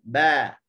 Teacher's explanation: Keluar daripada syafatain, dua bibir mulut. · Huruf ba disebut dalam keadaan tidak ada angin. Lawannya adalah hams. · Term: jahar